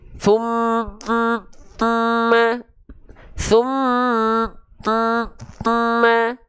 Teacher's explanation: harus dilafalkan dengan ditahan nah ditahan sekedar panjang dua harakat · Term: gunah